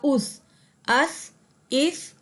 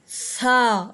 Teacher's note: ہم اپنی زبان کی ٹپ کو، یعنی ہماری زبان کا جو پہلا حصہ ہے جو ہمارے دانتوں کے ساتھ ٹچ ہوتا ہے، اس کو ہم سا کو ادا کرتے ہوئے اپنی زبان کے اوپر والے پہلے حصے کو اپنے اوپر والے دانتوں کے ساتھ بالکل لگا کے ادا کرتے ہیں